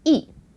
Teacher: So the first 一 is the fourth tone.